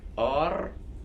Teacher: R is more voiced than English. We roll it like r.